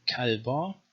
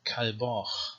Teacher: Next is the Kaf, with two pronunciations, either a stop, K, or some kind of post-vocalic fricative, Ch or Cha.